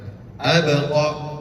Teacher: Jadi, ba tersebut hukumnya qalqalah dan harus dipantulkan.